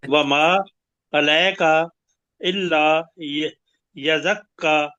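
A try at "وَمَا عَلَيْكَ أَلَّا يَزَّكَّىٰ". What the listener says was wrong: नहीं वमा अलैका अल्लाह यज़्ज़क्का इल्ला नहीं है ना अलिफ पे जबर है यज़्ज़क्का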